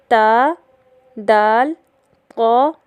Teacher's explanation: زبان کا کنارہ یعنی طرف اللسان جب ثنایا علیہ کی جڑ سے لگے تو 3 حروف تا، دال، طا ادا ہوتے ہیں